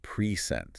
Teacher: But if I stress the second syllable, present. It's a verb, to give something.